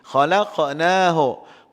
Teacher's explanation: Qaf di sini kita ada lantunan sikit sini, nama dia qalqalah.